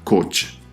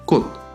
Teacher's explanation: CH a final de palabra o sílaba suena como una D o T suave. Esta palabra no se pronunciará coch, se pronuncia cot.